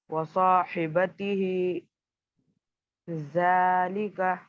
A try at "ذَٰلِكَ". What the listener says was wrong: زال کو صحیح نکلیے. زال نہیں نکل رہا ہے آپ کا.